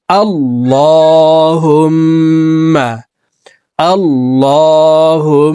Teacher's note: ওয়াজিব গুনাহ তিন সেকেন্ড পরিমাণ গুন্নাহ করে পড়বো · ইন্নাকা হামিদুম ইন্নাকা হামিদুম مجيد مجيد إنك حميد مجيد اللهم আল্লাহ আল্লাহ শব্দের আগের হরফে এখানে জবর আসছে, এই কারণে এই লামকে মোটা করে অর্থাৎ ল বলে পড়ব